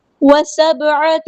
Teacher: وسبعۃ سین باریک light letter ہے، با ساکن پہ کلکلا اور عین کو وسطی لیکن تھوڑا سا ادا کرنا ہے